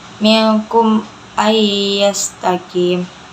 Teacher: Ayya itu idgham bigunnah karena nun bertemu dengan ya.